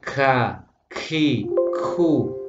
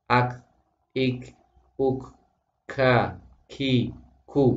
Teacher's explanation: hamesnya tidak berlebihan tapi juga tidak boleh tanpa hames.